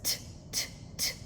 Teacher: t is a consonant that is unvoiced. So you're not using your vocal cords. If you put your hand here, you'll see that you'll feel that there is no vibration. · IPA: /t/